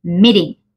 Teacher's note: la e pasa a sonar como una I en el español y la t como una r suave